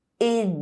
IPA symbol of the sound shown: e